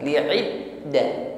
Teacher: Ya, huruf dal tasydid ditekan membacanya, dinabroh ya, ditekan. Saat menekan huruf dal, maka suara huruf dalnya di sini tertahan ya. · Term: sifat syiddah